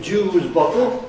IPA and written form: ˋʤuːzbɒtl̩ (juicebottle)